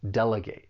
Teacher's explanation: With the verb, you're going to use that long A sound, delegate.